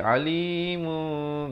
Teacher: ditukarkan bunyi tanwin yang ataupun bunyinya itu kepada bunyi mim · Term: iqlab